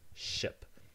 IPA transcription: ʃɪp